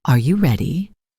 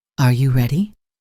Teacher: Rising intonation for questions. Are you ready? Your voice goes up at the end.